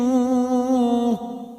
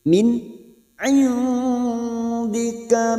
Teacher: nun sukun bertemu ain idhar halqi, dibaca jelas tanpa mendengung.